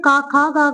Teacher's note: स्पर्श व्यंजनों के उच्चारण में क्या होता है? मुखांग पूरी तरह स्पर्श करते हैं